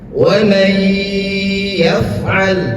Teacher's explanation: Artinya adalah memasukkan. Jadi zahirnya terlihat jelas nun itu ada, tetapi kita seakan-akan membaca tidak ada nunnya. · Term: idgham